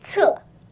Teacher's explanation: Can you feel the air come out of your mouth as you say 厕